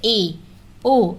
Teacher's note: अर्ध संवृंत में मुख विवर आधा बंद रहता है। अब अर्ध संवृंत उसे कहेंगे जिसमें हमारा मुंह आधा बंद रहेगा। आधा खुला रहेगा। तो जैसे ए ओ या आप बोल कर देख लीजिए।